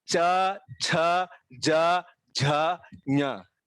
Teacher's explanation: जब आप ये उच्चार करते हैं तब आपका टंग जो है मुख के ऊपरी हिस्से के अगले हिस्से पर टच होता है, वहां पे स्पर्श होता है.